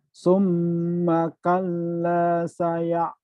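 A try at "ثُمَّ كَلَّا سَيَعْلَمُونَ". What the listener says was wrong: Tuh, udah bagus, cuman kurang neken ya. Kurang dikit lagi. Dimantepin dikit lagi aja coba.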